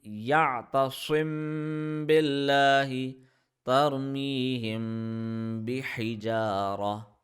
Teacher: If meme has a sukoon on it and the next letter is ba, we apply gunna on that meme. So gunna applies two times.